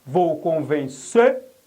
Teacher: O timbre aqui é fechado, é convencer